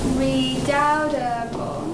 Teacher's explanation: There are four syllables and an accent goes on the second.